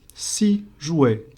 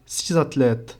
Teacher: The X sounds like a Z because there's a vowel right after it in the letter A.